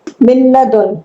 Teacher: یہ نون ساکن کی مثال ہے لام ملدن، یہ نون ساکن دن لام ہے تو ملدن پڑھیں گے، اس میں غنہ نہیں کرنا، ادغام تو کرنا ہے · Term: بلا غنہ